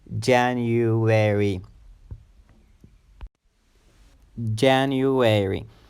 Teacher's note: this word has four syllables when the stress or emphasis is on the first syllable